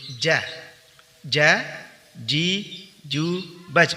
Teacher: Huruf ja dikeluarkan dengan cara tengah lidah menempel pada langit-langit, sehingga makhrajnya betul-betul tertutup dengan sempurna. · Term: huruf jim